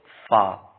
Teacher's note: پہلا لفظ ہے فا جو اوپر کے دانتوں کو کنارے اور نچلے ہونٹ کے تر حصے سے ادا ہوتا ہے